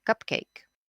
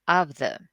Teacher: the first one combining two stressed syllables like cupcake and the second one combining two unstressed like other